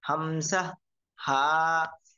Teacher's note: মাখরাজ হলকের শুরু হইতে